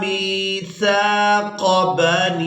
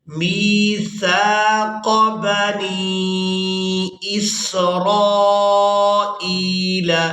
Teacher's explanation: میم کو یائے مدہ کے ساتھ ملاتے ہوئے کھینچ کر ادا کریں گے۔